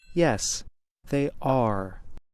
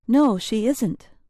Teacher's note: not always repeat the adjective or main verb of the question we stress the be verb and not or say them louder to make our answer clearer